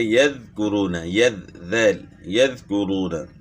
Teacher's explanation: ذال کی آواز باریک اور نرم ہوتی ہے،